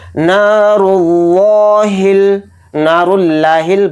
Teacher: تو دھیان سے دیکھیں نون کے ساتھ الف مدہ ہے تو نون الف زبر نا کو تھوڑا کھینچ کر پڑھیں گے، را کے اوپر پیش ہے، را کو موٹا پڑھیں گے اور را کو لام میں ملا کر پڑھیں گے، لام پر تشدید ہونے کی وجہ سے، اور اس لفظ اللہ کے بیچ والے لام کو موٹا پڑھیں گے